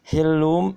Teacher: kemudian hillum iqlab juga ditahan 3 harokat